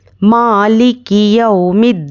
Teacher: मीम पर खड़ा ज़बर है, इसको 1 अलिफ के बराबर खींचकर पढ़ेंगे